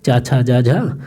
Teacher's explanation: जब रगड़ उत्पन्न करती तो कुछ घर्षण उत्पन्न होता है। घर्षण की वजह से इसे कहा जाता है स्पर्श संघर्षी।